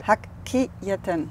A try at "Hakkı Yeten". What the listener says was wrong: Kı. Not ki. Kı.